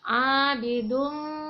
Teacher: Kemudian pada ayat keempat di kalimat abidumma harus dibacanya mendengung. Jadi sedikit udaranya dimasukkan ke rongga hidung supaya terdengarnya sedikit mendengung.